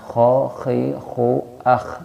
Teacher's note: Jadi huruf kho ini tempat keluarnya adna al-halqi, tenggorokan bagian atas sini ya. Sini ya. Kho al-khannas kho khi khu akh, kho ya.